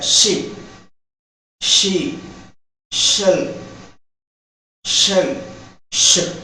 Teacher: You see, the vocal cords do not vibrate when this phoneme is produced. So it is called voiceless palato-alveolar fricative. It is a voiceless.